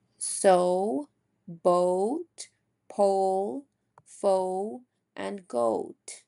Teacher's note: our lips are very rounded like a camera shutter or lens. So very r round, very open. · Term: tense phone, O sound